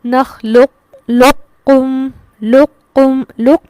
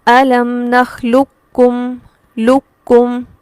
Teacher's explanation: پڑھتے ہوئے ہم قاف کے مخرج پر زبان لگائیں گے، موٹا اس کو ظاہر کرتے ہوئے کاف کو باریک پڑھیں گے. ناقص میں ادائیگی اس طرح سے ہوگی، جبکہ تام کی ادائیگی میں جب اس پر ادغام تام کیا جائے گا تو صرف کاف کی آواز کو واضح کیا جائے گا، قاف کو نہیں پڑھا جائے گا.